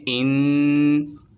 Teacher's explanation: نون مشدد ہے، اسے غنے کے ساتھ پڑھیں گے